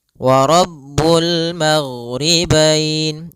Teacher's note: Kemudian pada bacaan wa rabbul maghribain kembali kita mendapati ada alif lam qamariyah, yaitu alif lam yang tertulis dan dibaca dengan jelas suara lamnya